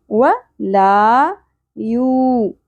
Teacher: و شارٹ ہوگا، لا حرف مدہ ایک الف کے برابر کھینچیں گے. و لا یو، واو ساکن سے پہلے پیش حرف مدہ ایک الف کے برابر کھینچیں گے